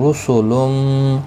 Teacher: را پیش کی وجہ سے پر پڑھا جائے گا